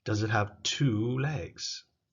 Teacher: You see, the two is important, so that's where you put the stress.